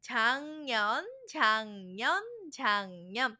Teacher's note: Last year, 작년, 작년, 작년. Here you'll see a g 받침, but it's pronounced as a 이응 작년 because of assimilation that's happening.